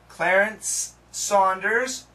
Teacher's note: the two S sounds can be connected